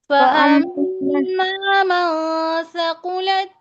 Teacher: मन नहीं, इख्फा होगा